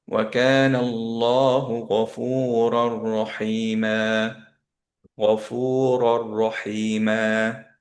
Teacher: সেই নুনটা পরের র এর সাথে এখন মার্জ হয়ে গেল। ওকে, সো পরের র এর সাথে মার্জ হওয়ার জন্য আপনি এইখানে দেখলেন যে সাদা চলে আসছে।